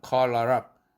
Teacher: L 사운드가 링크되면서 call her up